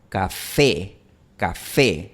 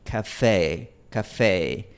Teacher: Café no hay ningún diptongo al final, pero si yo lo pronuncio al estilo inglés sería café café. Hay un ligero glide, una ligera deslizante al final. Y en español no tenemos eso.